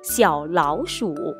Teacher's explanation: 后两个字成词，口诀是323